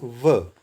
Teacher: फिर है वातश्र, दंत और मसूड़ा, स र ल, दंतोष्ठ, ऊपर के दांत और निचला होंठ। व बोलेंगे, व खुला रहेगा होंठ, पूरा होंठ मिलेगा नहीं, व, तो निचला होंठ लगेगा दांतों में, ऊपरी दांतों में